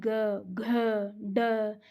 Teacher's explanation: ग घ ड इनको बोलते टाइम आपके ध्वनि में क्या होती है कंपन होती है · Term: घोष